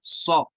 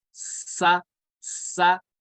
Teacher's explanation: صاد کو ہم کیا پڑھیں گے؟ پر پڑھیں گے، اور سین کو باریک پڑھیں گے. تو صاد زبر سا نہیں پڑھیں گے، سو پڑھیں گے.